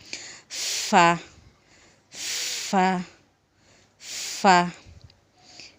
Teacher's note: নিচের ঠোঁটের পেট সামনের উপরের 2 দাঁতের আগার সঙ্গে লাগাইয়া